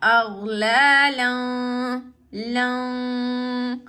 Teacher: tanween in our nose, as it's a light nasalization